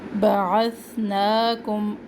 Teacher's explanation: اب یہاں پر بھی ثا کو سین سے نہیں چینج کرنا. بعثناکم نا کھڑا زبر ایک الف کے برابر. بعثناکم میم ساکن کے بعد میم مشدد.